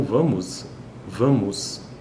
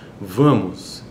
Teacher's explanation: de U ali não é e Esse a é um é um a nasal ele não é um a oral